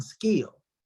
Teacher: voiceless velar plosive k as in skill